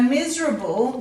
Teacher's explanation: you've got the s commonly making its z sound there